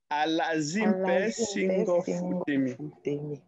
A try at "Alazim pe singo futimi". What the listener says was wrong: Il y a un ton là qui n'est pas sa place. Lazim pe singo futimi.